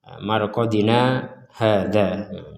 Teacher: kata marqodina itu berhenti tanpa mengambil nafas kemudian lanjut pada ayat berikutnya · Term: saktah